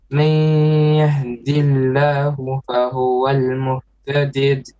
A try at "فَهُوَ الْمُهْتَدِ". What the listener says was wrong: No. You said فهو المهتدد. No. فهو المهتد. Again.